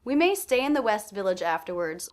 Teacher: west and village were both stressed as was afterwards but they had less curve to the voice they were less stressed to me than the word stay which